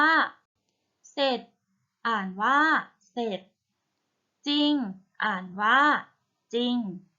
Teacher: พยัญชนะตัวหลังเนี่ยเป็นรอเรือค่ะให้ออกเสียงเฉพาะพยัญชนะตัวหน้านะคะ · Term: คําควบกล้ําไม่แท้